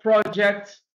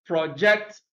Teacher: stress the first syllable when it is a noun and stress the second syllable when it is a verb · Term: shifting stress